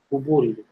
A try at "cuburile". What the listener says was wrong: Ouais, cuburile. C'est comme cube. Tu gardes l'accent de, quand tu dis cube là, tu utilises le même accent, mais au lieu de dire U, tu dis OU.